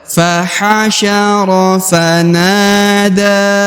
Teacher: Yang perlu diperhatikan huruf na ya, karena berharokat alif ya, maka dibaca 2 harokat.